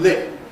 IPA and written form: lɪt̚ (lit)